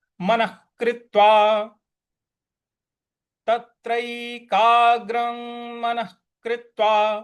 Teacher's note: विसर्ग के आगे क है तो वहां पे ख का उच्चारण लाएंगे। तो ये हो जाएगा तत्रै, तत्रैकाग्रं मनः, तत्रैकाग्रं मनः कृत्वा, मनः कृत्वा, ख का उच्चारण आएगा यहाँ पे।